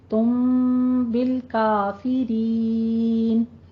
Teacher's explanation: یعنی 2 کاؤنٹ کرنے ہیں اور تم کی آواز کو میم میں بدل دینا ہے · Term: اقلاب